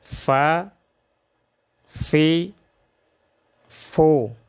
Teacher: نرم آواز کے ساتھ رخوت کی وجہ سے، اس میں صفت رخوت ہے۔